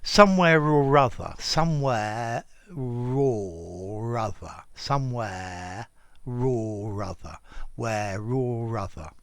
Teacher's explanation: it's just this moving of the final sound at the end of a word on to the next one and this particularly happens with the sound r